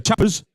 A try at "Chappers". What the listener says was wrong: Chappers. No, not Chapman. Yeah, but you went Chappers as though you were going to say something else, which is Chapman.